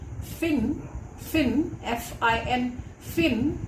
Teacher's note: If you want me to describe fa, I will say that fa is a voiceless labiodental fricative.